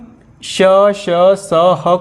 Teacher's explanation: जब भी हम श, स, ह को बोलते हैं तो वायु जो है मुख में घर्षण करता है, यानी घर्षण करने के बाद ये शब्द निकलते हैं, इसलिए इसको ऊष्म व्यंजन करते हैं।